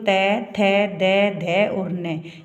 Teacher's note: त वर्ग में देखो त द ध और न ये होते है दंत व्यंजन